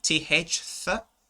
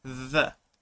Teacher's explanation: instead of using th, th, I actually used a voiced th, the.